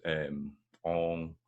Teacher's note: Or we can use sounds like French vowels, ong, things like that, more kind of nasalised vowels